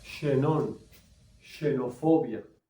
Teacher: Cuando está al principio de palabra, suena como una SH